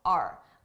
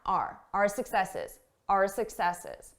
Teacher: I did not pronounce this as our. I said R. A very reduced sound, R. Our successes, our successes.